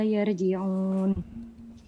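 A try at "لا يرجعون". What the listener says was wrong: Ya, yar itu ra-nya tebal harusnya.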